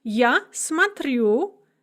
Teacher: So we have смотреть with the stress on the second syllable in the infinitive. Я смотрю, the stress remains on the second syllable.